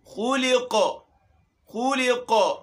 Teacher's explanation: خا پہ پیش ہے، موٹا حرف ہے، موٹا بھی کریں گے اور اس میں ہونٹ بھی گول ہوں گے. خلق، خلق قاف ہے، اس میں قلقلہ ہوگا.